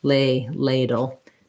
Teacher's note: then i just have first syllable stress tense a lay ladle make sure you use a diphthong for that a it's gliding between two sounds